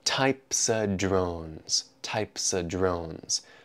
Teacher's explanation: of, before the consonant D in drones, removes its V sound